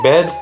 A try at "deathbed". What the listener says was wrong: no it's not bad his death bed death bed death bed